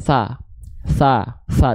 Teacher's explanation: ada vokal a pada harakat fathah bukan vokal O ya tapi vokal a maka buka mulut sambil senyum